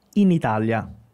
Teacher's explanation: são duas palavras separadas mas na hora de falar eu vou falar juntas